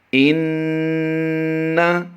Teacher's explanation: नून मुशद्दिद होने की वजह से हमने गुन्ना किया है